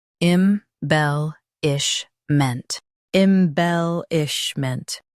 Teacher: Stress bell and keep ish light.